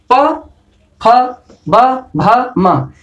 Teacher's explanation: प, फ, ब, भ, म, ये ओष्ठ से उच्चारण हो रहा है इनका। तो क्या है, ये ओष्ठ वर्ग के अंतर्गत आते हैं।